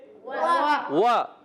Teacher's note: واو کی ادائیگی ہوتی ہے ہونٹوں کی گولائی سے، واو پر زبر ہے، بغیر کھینچے ادا کریں گے، ہونٹ گول کر کے واو وا پڑھیں گے